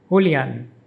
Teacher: The emphasis is on the last syllable an.